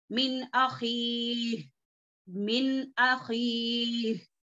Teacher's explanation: अब ये हमजा जो है हुर्फे हलकी में से है, اخصل حلق سے نکلنے والا حرف ہے، تو نون ساکین کے بعد حلق کا لیٹر آ رہا ہے تو کیا ہو گیا یہاں پر غنہ نہیں ہوگا